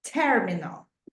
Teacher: The stress goes in the first syllable.